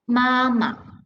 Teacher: the first tone the pronunciation is ma over there right but the second word no tone mark is the neutral tone